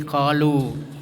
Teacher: panjangnya ee dua harakat atau satu Alif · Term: mad thii